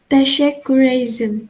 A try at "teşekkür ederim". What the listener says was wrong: No, teşekkür is right. The other one is ederim.